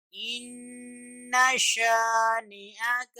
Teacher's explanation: ان یہاں غنہ کریں گے، آواز ناک میں جائے گی